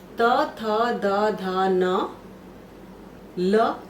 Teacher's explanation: री तवर्ग त थ द ध न ल एवं स का स्थान दंत होता है